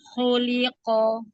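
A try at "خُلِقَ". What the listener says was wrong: Tebalkan kofnya.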